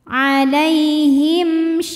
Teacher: karena mim sukun menghadapi huruf shin, maka mim sukun kita bunyikan dengan m jelas. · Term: izhar syafawi